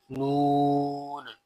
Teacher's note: لام کی جگہ سے لیکن ایک داڑھ کم ہو کر جب اوپر والے 3 دانتوں کے مسوڑوں سے لگے تو اس سے نون ادا ہوتا ہے